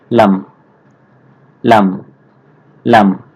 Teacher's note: জিহ্বার আগার কিনারাগা সামনের উপরের দাঁতের মাড়ির সঙ্গে লাগাইয়া উচ্চারিত হবে স্বাভাবিকভাবে